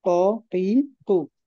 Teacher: জিহ্বার গোড়া তার বরাবর উপরে তালুর সাথে লাগিয়ে উচ্চারিত হয়। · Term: কফ